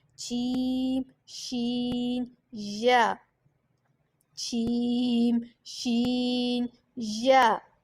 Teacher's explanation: یہ زبان کے درمیان اور تالو کے درمیان سے ادا ہوتے ہیں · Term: حروف شجریہ